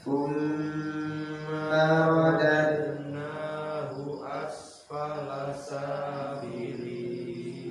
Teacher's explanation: Thumma tidak ada alif tepatnya, hanya ditahan saja, tidak panjang.